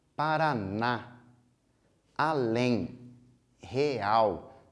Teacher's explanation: todas as minhas últimas sílabas são as minhas sílabas mais fortes, são as minhas sílabas tônicas